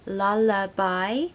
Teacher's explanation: lullaby should be three syllables lullaby and we need a schwa sound in the middle